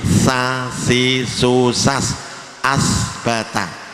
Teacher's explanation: Jadi di belakangnya ini ujung gigi dikenakan belakangnya gigi yang ujung. Jadi kalau sa ini tidak nempel ya, mengarah kepada ujung gigi